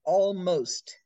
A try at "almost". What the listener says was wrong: Because again, it's the last sound. Most. That has to come through. Yeah, that's it.